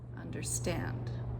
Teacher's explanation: So you can hear that the first two syllables under were unstressed and then I put that stress on the third syllable